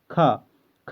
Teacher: स्पर्श व्यंजन कंठध्वनि अघोष और महाप्राण ध्वनि